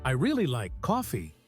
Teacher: you might emphasize really to show just how much you like it